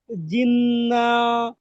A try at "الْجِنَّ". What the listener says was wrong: জিন্না গুণা করেন, টান দিয়েন না, জিন্না।